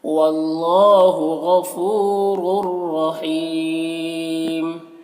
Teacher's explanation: اور یہاں پر تنوین کے بعد را حروف یرملون میں سے آ رہا تو ادغام تام ہوگا. تنوین کو را سے ملا کر، اس را کو اس را سے ملا کر بغیر غنہ کے پڑھیں گے. اور یہاں پر یا مدہ ہے، یہاں پر وقف کریں گے تو مد عارض وقفی ہوگا، تو اس طرح سے پڑھیں گے.